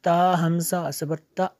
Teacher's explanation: हमज़ा साकना को झटका देंगे